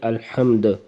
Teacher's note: یہ دال کے اوپر سکون آ جائے گی وقفن میں، اور پھر اس کے اوپر قلقلہ کریں گے